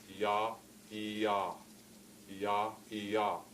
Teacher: The same way the Y, which I say is very close to the vowel I, ya, ya, ya, ya. The ya, the Y has more constriction than does the vowel E